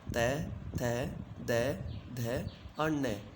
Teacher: दंत स्थान से उच्चारित वर्ण दंते कहलाते हैं। इन वर्णों का उच्चारण करते समय जिह्वा दांतों का स्पर्श करती है।